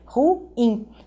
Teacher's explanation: essa palavra é uma oxítona, são duas sílabas, né?